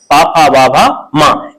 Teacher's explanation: प फ ब भ म ये सभी ओष्ठ है। इनका उच्चारण ओठों से होता है।